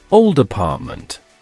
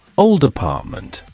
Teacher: Old ends with a D, consonant, and apartment begins with an A, vowel. So, we link them